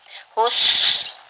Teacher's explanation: Hus di sini adalah bacaan hamos, yaitu husinnya mati. Kita alirkan suaranya, nafasnya bukan suara.